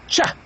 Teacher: the t is stop sound while the Sha is fricative so the sound starts being stop then it ends up being fricative but the two sounds becomes one one sound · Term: affricate